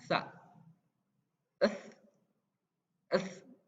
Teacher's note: Nah, ini pengucapannya juga harus sesuai gitu dengan kaidah huruf hijaiyah, yaitu harus digigit di ujung gigi seri, lidahnya digigit di ujung gigi seri, tahan sambil ngomong